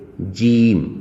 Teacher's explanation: زبان کے درمیان اور منہ کے اندر جو زبان سے اوپر چھت ہوتی ہے سے ادا ہوگا